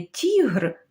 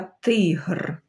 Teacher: І пригадуємо, як він позначається рісочкою. Так, тому що він твердий, не тігр, а тигр.